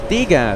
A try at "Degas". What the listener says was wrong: Degas. wrong, Wrong emphasis there.